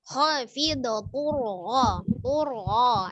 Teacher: Ya, hati-hati di huruf ro-nya. Ro itu memiliki sifat takrir atau getar ya, tapi hanya sekali saja. Jadi bukan tur, tidak ada r-nya ya, tapi dia sekali saja takrirnya untuk getarnya.